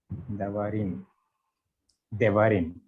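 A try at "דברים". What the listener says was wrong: Yeah, very good, brother.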